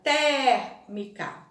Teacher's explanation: A palavra térmica, né? A letrinha E, ela é mais aberta.